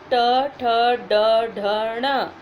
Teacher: ये हमारे मुंह के अंदर मूर्धा भागों को स्पर्श करती है। मूर्धा तालु के ऊपर वाले भाग को मूर्धा कहते हैं।